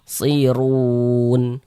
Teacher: Run, huruf ra memiliki harokat dhammah, maka huruf ra memiliki harokat dhammah, memiliki harokat fathah, dibaca tebal, baca tafkhim. Sehingga pangkal lisan kita naik terangkat ke atas ketika kita mengucapkannya. · Run dibaca panjang. Ini namanya mad arid li sukun.